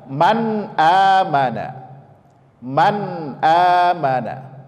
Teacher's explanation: itu dibaca dengan menempelkan secara langsung lidah ke langit-langit atas ya itu cara membaca izhar itu adalah menempelkan secara langsung lidah ke langit-langit atas